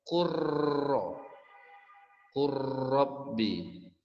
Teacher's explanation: Jadi lamnya dimasukkan, hilangkan, ya. Lamnya dihilangkan langsung ke huruf yang kedua. Huruf yang kedua ditambah dengan tasydid. Jadi cara membacanya adalah kurro, kurrabbi. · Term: idgham mutajanisain